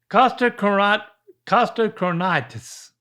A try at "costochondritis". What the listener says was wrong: That's close, but there's a D in there. Costco chondritis. This is Costo, but I like Costco chondritis better.